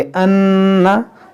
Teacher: नून मुशद्दद में गुन्ना करेंगे